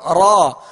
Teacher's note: بس ہلکی سی کپاہٹ ہو، جب را کو ادا کریں تو زبان اس کے جب مخرج میں لگے تو ہلکی سی کپاہٹ ہو را. اب اس کو تکرار کے ساتھ یعنی را یوں بھی نہیں پڑھنا اور بغیر مشابہت تکرار کے بغیر کپی کے بھی نہیں پڑھنا، ورنہ را بن جائے گا را، اور یہ بھی غلط طریقہ ہے.